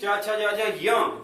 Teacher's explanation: जो 5वां वर्ण च वर्ग का य है, वो तालु के साथ साथ नासिका से भी उच्चारित होता है।